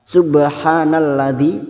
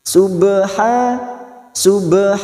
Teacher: ba sukun qalqalah sugro yang mati asli di tengah kalimat. Jangan lupa dipantulkan.